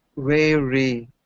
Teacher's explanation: Instead of the V sound at the beginning, I'm hearing a W sound from you, okay? So I'm hearing wary instead of very.